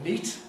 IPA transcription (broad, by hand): niˑt